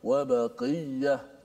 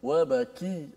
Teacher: Qaf dia agak tebal, kaf dia nipis sedikit.